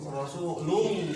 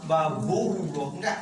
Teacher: bukan pakai wawu, rasulullah, langsung ke lam